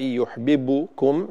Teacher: لا نضم الشفتين في الباء يحببكم حتى لا تظهر الباء وكأنها مضمومة